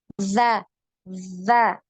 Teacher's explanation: Zal, jadi makhrajnya ujung lidahnya nempel di ujung gigi seri atas. Kemudian sifat, ya, sifat yang melekat eh, di huruf zal ini, ya, ketika kita mengucapkan hurufnya, za ini tidak punya aliran nafas. · ketika kita mengucapkan hurufnya, za ini tidak punya aliran nafas. Jadi nafasnya tertahan. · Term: nafas tertahan